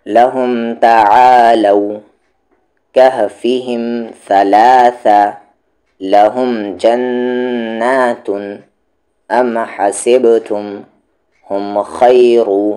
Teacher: گے۔ ربہم بہم یعلم بأن علیہم بالإثم، اب آگے یہاں پر میم ساکن کے بعد نہ میم ہے نہ با ہے تو اظہار شفوی، یعنی آواز کو صاف صاف، اور وہاں میم پر رکیں گے بھی نہیں۔